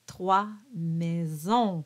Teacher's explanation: at the end, you have a nice, round, nasalized O, which turns into ON.